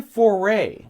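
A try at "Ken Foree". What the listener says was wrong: That's not Foray. Ken Four. 2 silent E's.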